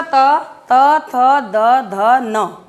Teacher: जीभ आपके दांतों को स्पर्श कर रही है, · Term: दंत्य